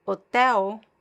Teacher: if I have the L at the end of a word like hotel, the L is pronounced as a weak ooh